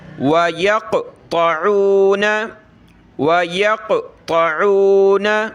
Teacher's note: وَيَقْطَعُونَ، طا عین، طا کو موٹا کریں